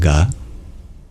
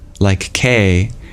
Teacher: it's what we call a soft consonant, because it's voiced while you pronounce it